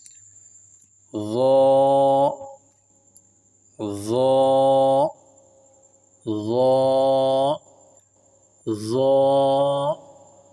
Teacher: ظا کو بھی موٹا کر کے پڑھیں گے کیونکہ یہ بھی حروف مستعلیہ میں سے ہے